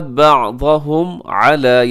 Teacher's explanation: اس کے بعد بعضهم علی، یہاں بعضهم میں میم ساکن ہے، میم ساکن کے بعد عین ہے، تو یہاں پہ ہم اظہار شفوی کریں گے، یعنی میم ساکن پہ ہم ٹھہریں گے نہیں، غنہ نہیں کریں گے، بلکہ تیزی سے ہم اس کو ادا کریں گے